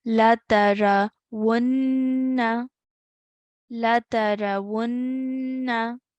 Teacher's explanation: because it's a noon mushaddad, we made that nasal sound, the ghunnah sound